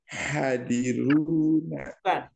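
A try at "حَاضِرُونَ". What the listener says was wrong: Bukan hadiruna. Ha panjang. Ha.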